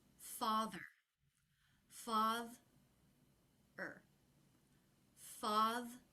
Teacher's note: Today we're talking about word stress and ER ending words that are 2 or more syllables. The ER ending will always be unstressed, so it will be lower in pitch and quicker than the stressed syllable in the word.